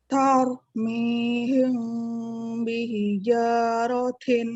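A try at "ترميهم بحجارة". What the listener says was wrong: Ya, huruf ta-nya jangan lupa hamusnya. Tau, mihim. Ya, jadi langsung ini ya, bibirnya juga ini ya, bereaksi gitu, ibaratnya ngikut. Tau, tau, tau.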